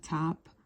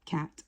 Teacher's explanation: the air is blocked momentarily by the articulators and then it's released um and because T is explosive there's a brief um buildup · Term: voiceless